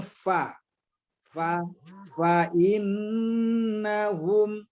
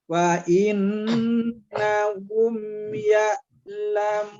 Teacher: Nah, ini jelas-jelasnya fa innahum, humnya mim sukun ketemu dengan huruf selain daripada mim dan ba, namanya izhar safawi. Dibacanya tidak berdengung tapi mim sukunnya kita jelaskan.